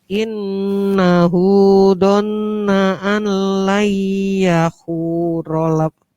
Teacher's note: Nun tasydid, mim tasydid itu dibaca gunnah